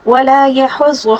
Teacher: ہا کو حلق کے درمیانی حصے سے ادا کریں گے اور غاد کو پر پڑھیں گے